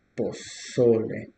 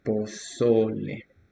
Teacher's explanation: The stress is in the second syllable, pozole.